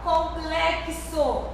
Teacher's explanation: Perceba que ao pronunciar o X, nós temos dois fonemas, tá? Que é o K e o S.